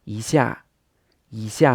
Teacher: this is the number one coming before a fourth tone, so it changes to the second tone.